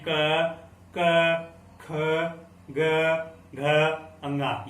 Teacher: क वर्ग होता है वो कंठ होता है, यानी क, ख, ग, घ, अंगा, ये बोलते समय हमें गले से आवाज आती है